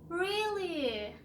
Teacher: We just, we just start at low pitch and raise our voice.